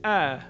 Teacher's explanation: this vowel is between the english cat and mud vowels but of the two i'd say it's a little bit closer to the mud vowel